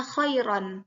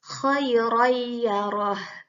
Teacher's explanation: Tapi karena bertemu dengan salah satu huruf idgham yaitu ya, maka dileburkan fathatainnya, maka dibacanya khayrayyarah.